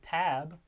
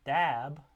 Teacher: the voiceless aspirated stop in t, a tab, and the voice stop in dab, the alveolar stop.